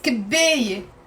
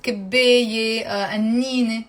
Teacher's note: And it has a te marbuta, which we don't pronounce.